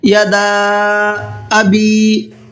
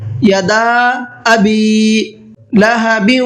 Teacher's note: اس صورت میں چھوٹا مد ہوتا ہے اور چھوٹے مد کو 1 سے 3 الف کی برابر کھینچ کر کے پڑھنا ہوتا ہے۔ الف کا اور حمزہ کا دونوں کا ساؤنڈ الگ الگ ہونا ہے۔